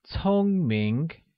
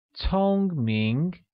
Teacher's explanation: Intelligent or smart translates as 聪明, which is pronounced with a high-level tone on O and a mid-rising tone on I, becoming 聪明.